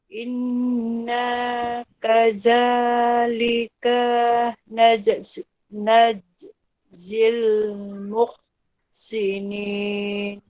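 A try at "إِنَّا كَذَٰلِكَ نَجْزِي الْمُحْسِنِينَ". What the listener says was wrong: Ada yang terpanjang sedikit. In in mesti dengung. Inna, coba ulang sekali lagi.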